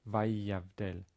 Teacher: The yud comes after a vowel a, va, vayavdel, and therefore it's a long yud. Okay, after a vowel, it has to be a long.